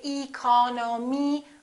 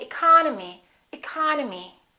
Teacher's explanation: the second syllable is stressed therefore this e and this o are reduced